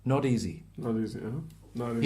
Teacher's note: So it becomes a very relaxed T that's a bit soft like a D